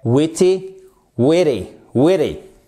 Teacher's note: Et d'un te, il se fait tordre et il devient presque un de.